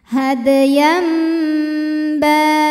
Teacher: tanwinnya yang tadinya bunyi n diganti jadi bunyi m, jadi bunyi mim sukun disertai dengung. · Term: iqlab